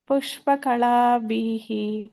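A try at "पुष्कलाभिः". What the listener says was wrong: ಪುಷ್ಪ ಅಲ್ಲ ಮಾತಾಜಿ ಪುಷ್ ಪುಷ್ಕಳಾಭಿಹಿ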